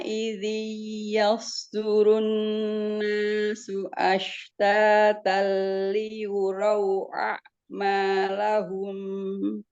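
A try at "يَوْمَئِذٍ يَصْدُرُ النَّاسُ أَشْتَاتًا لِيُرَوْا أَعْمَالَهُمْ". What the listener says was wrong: Tapi tadi itu huruf ya sama sod itu ke bawah. Yos gitu ya. Jangan yos. Tapi ya tipis. Ya, yos. Dijaga di tipis dianya. Kalau sod itu pasti tebal. Yos.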